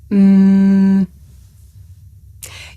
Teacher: my lips and letting the sound come through my nose um I can even feel my nose vibrating